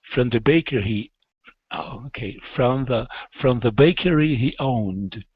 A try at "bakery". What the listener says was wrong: So here, let's not pronounce that E. It's bakery.